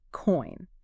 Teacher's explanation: starting with a rounded o shape and moving to a wide e shape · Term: oy diphthong